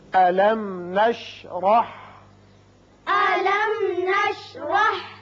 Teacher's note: میم ساکن یہاں اظہار شفوی ہوگا اور را کے اوپر زبر ہے، اس کو پر کر کے پڑھیں گے